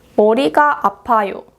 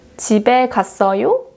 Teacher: make a rising intonation at the end of the sentence